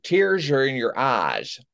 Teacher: I'm hearing a lisp of S to SH.